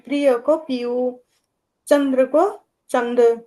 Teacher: संयुक्ताक्षर में र को प्राय लोप कर देते हैं।